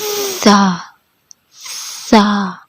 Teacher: سا کو ادا کرتے وقت ہلکی سی ایئر بھی باہر آتی ہے